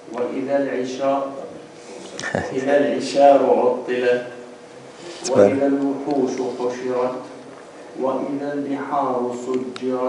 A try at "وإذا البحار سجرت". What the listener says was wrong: You said ha. بحا.